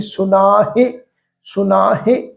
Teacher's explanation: ਮਾਹੇ, ਹਾਹੇ ਦੀ ਸਿਹਾਰੀ ਛੋਟੀ ਮਾਤਰਾ ਹੈ ਤੇ ਹਾਹੇ ਦੀ ਜਿਹੜੀ ਸਿਹਾਰੀ ਆ ਉਹ ਹਲਕੀ ਜੀ ਟੋਨ ਵਿੱਚ ਪ੍ਰੋਨਾਂਸ ਹੋਏਗੀ